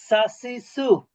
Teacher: জিহ্বার আগা নিচের দাঁতের গোড়া।